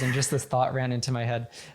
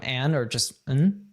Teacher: with and, we often drop the D. So it can become and or just n.